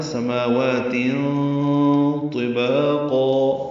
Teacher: تنوین کے بعد طا آنے کی وجہ سے اخفا ہے